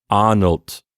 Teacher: sound yes and with a t at the end of course the voiceless d which uh basically turns it into a t sound